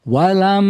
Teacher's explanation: dinaikkan suara kita atau ke gunah kita, dengung kita ke al khaisum